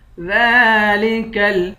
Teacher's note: دال پر کھڑا زبر ہے، اس کو ایک الف کی مقدار کھینچ کر پڑھیں گے. ذالکل فوز، زا کو لام کے ساتھ ملا کر پڑھیں گے.